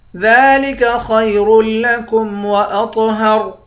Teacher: طا کو موٹا بھی پڑھیں گے، قلقلہ بھی کریں گے. طا موٹے حرف میں سے بھی ہے اور قلقلے والے حرف میں سے بھی ہے.